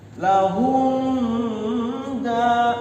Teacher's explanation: sukunkan lahum da, langsung masuk kepada huruf dal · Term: Izhar syafawi